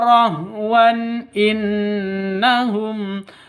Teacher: Di sini ada tanwin bertemu dengan hamzah. Jadi cara bacanya jelas terang karena izhar halqi ya.